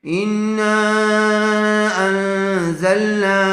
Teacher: نون ساکن کے بعد حروف اخفا میں سے زا آیا ہوا ہے، اس لیے غننے کے ساتھ اخفا کر کے پڑھیں گے